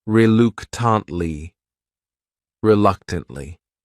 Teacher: This word has 4 syllables, and the stress is on that second syllable. That third syllable also has that schwa.